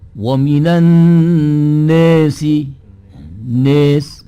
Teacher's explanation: pengertian imalah kubro itu adalah bunyi antara harokat fathah dengan harokat kasrah, 50% harokat fathah, 50% harokat kasrah